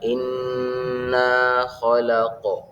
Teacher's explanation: huruf qaf, yakni huruf yang mempunyai sifat qalqalah, yakni dipantulkan. Jadi cara membacanya inna khalaq, huruf qafnya dipantulkan.